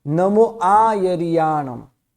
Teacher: नमो आ, थोड़ा आ जो है थोड़ा लंबा के बोलना है, वैसे ही या थोड़ा लंबा के बोलना, क्योंकि यहाँ मात्रा डबल मात्रा है, क्योंकि ये दीर्घ व्यंजन है, दीर्घ व्यंजन और दीर्घ स्वर है ना।